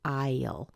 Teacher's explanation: have it as a contraction you've got to say il now you hear the tiniest little schwa between the I and the L don't really make it into two syllables it's not but there's